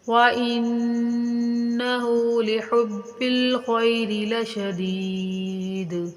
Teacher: ان مشدد کا غنہ ہوگا